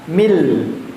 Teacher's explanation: Mi-nya jangan min nggih, tapi langsung masuk ke lam.